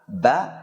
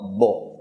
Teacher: Dikarenakan nafasnya tertahan dan suaranya juga tertahan, ba ini mempunyai sifat khusus yang ia miliki, yakni qalqalah atau pantulan, dikarenakan tertahannya suara dan nafasnya. Kemudian dalam mengucapkan ba, lidah kita turun, tidak menempel ke langit-langit atas, sehingga suaranya adalah a, ba, tidak o atau bo